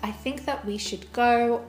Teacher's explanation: the word “that” is said in its weak form, with a schwa sound.